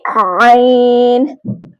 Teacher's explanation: आइन को हलक के दरमियान वाले हिस्से से अदा करना है